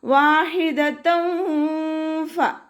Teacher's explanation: ഫ ലൈറ്റാക്കിയിട്ട് ഉച്ചരിക്കുക. മേലെ മുൻപല്ലിൻ്റെ അറ്റം താഴെ ചുണ്ടിൻ്റെ ഉൾവശത്ത് നനഞ്ഞ ഭാഗത്ത് വെക്കുക. · തെൻവീനിന് ശേഷം ഇഖ്ഫാഇൻ്റെ ലെറ്ററായിട്ടുള്ള ഫ വന്നിട്ടുണ്ട്. അപ്പോൾ തെൻവീനുള്ള നൂനിനെ മറച്ചു വെച്ചിട്ട് മണിച്ചോതി കൊടുക്കുക